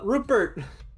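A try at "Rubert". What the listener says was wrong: It's a Rupert. There's a B, not a P. Rupert. There's no P in here.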